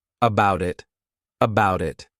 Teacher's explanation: I'll actually use a soft D sound, and you'll hear that sound on both sides of the word, and I'll say it as one.